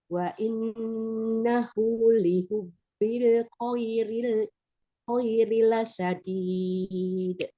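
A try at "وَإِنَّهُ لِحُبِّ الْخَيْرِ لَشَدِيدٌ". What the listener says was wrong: Ya, itu wa innahu nya juga sepertinya panjang ya, sama dengan yang bihi tadi setiap hak bomir di sini ditulisnya tipis tapi harusnya panjang. Wa innahu lihubbil khairi lasyadid. Punya dua ya, ini setiap hadomirnya dia di contoh ini ditulis pendek, tapi otomatis kalau baca tetap panjang ya. Wa innahu nya tetap dua ya.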